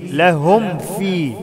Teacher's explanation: ميم ساكنة بعدها واو أو فاء، أظهر الميم، أقفل فم كويس في الميم